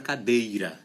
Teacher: é na palavra cadeira é a sílaba tônica é a segunda